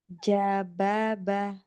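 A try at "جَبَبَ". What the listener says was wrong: Enggak, jangan ca. Mundur lagi dikit. Kan yang kuat. Ja.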